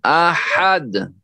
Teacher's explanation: اور اس میں جو ہے تنوین ہے، تو یہاں رکتے وقت جو ہے قلقلہ ہونا چاہیے۔ کیوں؟ تنوین کو ختم کر دیں گے اور اس کے اوپر جزم لگا دیں گے، اور یہ حروف قلقلہ میں سے ساکن کر دیں گے اس کو، یعنی سکون لگا دیں گے۔